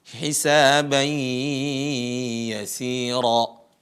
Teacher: Suara nun, suara n yang keluar dari hidung, bukan dari mulut. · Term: gunnah